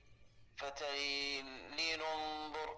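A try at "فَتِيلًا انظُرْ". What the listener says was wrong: هي فتيلة ننظر، ماشي. ضم نون التنوين وصلا، يعني فتيلة نو، فتيلة نو.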